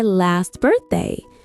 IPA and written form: lɑːst ˈbɜːrθdeɪ (last birthday)